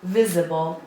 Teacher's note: 3 syllables and the stress is on the first syllable